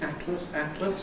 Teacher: On the whole, I say atlas with lateral release